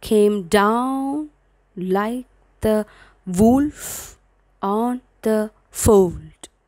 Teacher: mentioned in your textbook so an apostic meter follows a pattern of two unstressed syllable followed by a stress syllable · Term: tetrameter